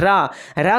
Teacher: जैसे कि हम बोलेंगे र को बोलेंगे तो हमारा जिह्वा जो है 2-3 बार कंपन करेगा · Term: प्रकंपित